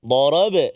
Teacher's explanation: Ada qalqalah pada huruf ba di tengah kalimah sughra.